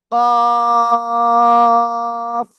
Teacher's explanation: জিহ্বার গোড়া তার বরাবর উপরে তালুর সাথে লাগিয়ে চার আলিফ টানিয়া মোটা আওয়াজে পড়বো